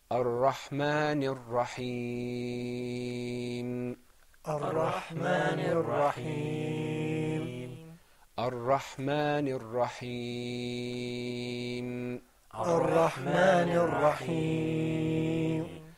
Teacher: we elongated the ya in Rahim because there was that temporary sukoon. Now that sukoon, there's a mark on that meme, but because we're stopping, we're not going to move on.